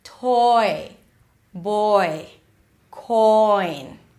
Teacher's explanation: here we move from the aw sound, so you need to drop your jaw a little bit, to the I as in sit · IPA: ɔɪ